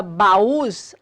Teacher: Se você prestar atenção na palavra baús, a sílaba tônica é o us, é uma oxítona